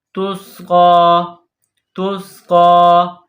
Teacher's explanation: قاف کے اوپر کڑا زبر ہے، ایک الف کے برابر کھینچ کر پڑھیں گے. قاف کڑا زبر قا، قاف کڑا زبر قا.